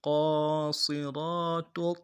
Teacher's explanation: صاد کو موٹا کرنا ہے، سیٹی جو ہے صاد کی موٹی ہوگی